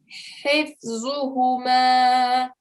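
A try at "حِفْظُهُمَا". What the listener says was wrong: Okay, so make sure that the middle of the throat sound comes here.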